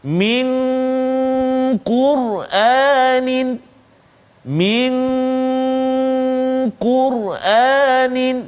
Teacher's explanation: nun mati bertemu dengan qaf, min qur'anin, min qur'anin, dengung dua harakat, nun mati bertemu dengan qaf.